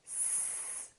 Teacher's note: Put your fingers on your vocal cords again, and let's say S. Do you feel a vibration this time? No. Therefore, S is a voiceless consonant.